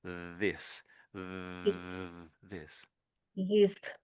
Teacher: with the th it's your tongue just behind your teeth, your top set of teeth and you're just touching the top of your tops of the teeth.